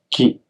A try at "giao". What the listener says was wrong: Ji. Ji. No, you're saying with a K. Ji. No, it's with a C. H. G. But it's a little bit different.